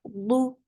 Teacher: for Dhamma, circular lips, the sound is short